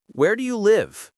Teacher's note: WH questions have falling intonation. Where do you live? Voice goes down at the end.